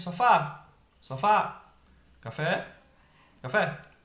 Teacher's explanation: então a última sílaba tá sendo a mais forte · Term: palavras oxítonas